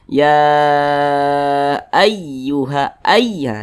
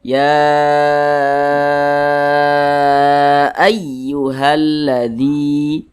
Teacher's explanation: huruf ya yang bertasydidnya itu Nah maka ini dinabber-naber itu adalah penekanan pada huruf tertentu sehingga intonasi suaranya sedikit lebih tinggi dibandingkan dengan huruf-huruf di sampingnya ini kita baca ya ayyuha Ay ditekan seperti itu Ditekan Ay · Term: bacaan nabr